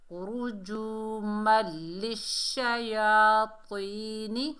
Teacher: ادغام بلا غنہ، ادغام کریں گے یعنی بغیر غنہ کے